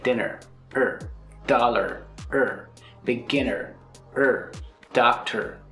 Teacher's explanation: Short, smooth, quick, the weak R sound.